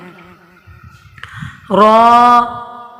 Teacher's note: زبان کی نوک اور مقابل کے تالو سے ادا ہوتا ہے، یعنی مقابل کا تالو را لگے گی زبان اس کے اوپر۔